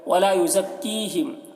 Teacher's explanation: ولا یزکیہم دیکھیے کی کو ایک الف کے برابر کھینچ کر پڑھیں گے، یا مدہ ہے